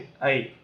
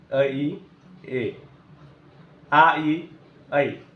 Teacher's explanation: आ आणि इ आपल्याला यामध्ये थोडीशी फोड करून दोन मात्रामध्ये जर आपण त्याचा विचार केला तर आ अधिक इ आई असा उच्चार असतो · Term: संयुक्त स्वर